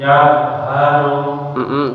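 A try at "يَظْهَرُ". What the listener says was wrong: Lagi tebalkan lagi dha-nya. Ya haru. Ya, dialirkan benar-benar, lidahnya benar-benar nempel dulu. Yadhharu.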